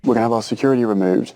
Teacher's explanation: he's pronounced the word security with a d pronunciation